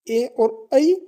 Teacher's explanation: ए और ऐ यह है कंठ और तालु से बोले जाने वाले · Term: कंठ तालु